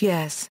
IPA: ˈjɛs